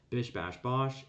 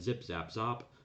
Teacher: start with a high front vowel and end with a low back vowel